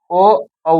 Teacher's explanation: कंठ और ओष्ठ से ओ औ बोला जाता है